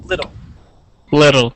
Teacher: the Double T now uh the the word is little so that t you're going to pronounce you're going to pronounce like a D sound